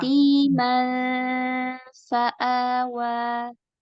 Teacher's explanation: Dekatkan ujung gigi ke perut bibir ketika berdengung mi karena bertemu dengan fa.